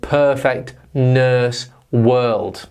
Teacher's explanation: It's actually the long version of the schwa sound. So if we say the schwa sound again, if we make a long noise, that is the disgusting sound.